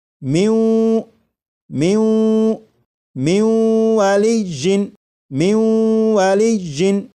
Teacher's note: کر کے پڑھیں گے، جیسے لکھا ہوا ہے من من، لیکن جب نون ساکن کا واو میں ادغام کریں گے تو پھر یہ من نہیں پڑھا جائے گا ، بلکہ اسے پڑھیں گے میوں میوں میوں والی جن میوں